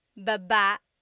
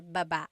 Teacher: Emphasis is on the first syllable, ba. Then there's ba, Baba. Emphasis is on the second syllable.